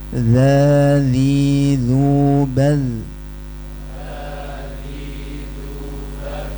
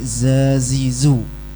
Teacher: Jangan ditiup karena dzal enggak punya sifat desis.